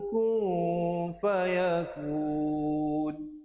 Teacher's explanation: Asalnya kaf baris depan bertemu nun bunyi kun. Tapi bila datang fa jadi ikhfa. Ku 2 harakat.